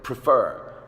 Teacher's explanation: prefer the accented syllable is the last syllable